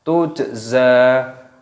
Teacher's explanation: jimnya sukun, ini dibaca qalqalah, diqalqalah, dipantulkan suaranya